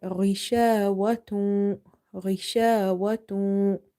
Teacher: Ghain is from the top of your throat. It's from the halki letters.